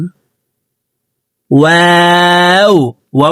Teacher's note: ওয়াও হরফকে দুই ঠোঁট গোল করে দুই ঠোঁটের মাঝে ফাঁকা রেখে পড়ব